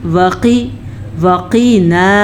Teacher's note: क़ाफ़ को पूर पढ़ेंगे। क़ाफ़ हरूफ मुस्तालिया में से है ये वाला क़ाफ़। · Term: मोटा क़ाफ़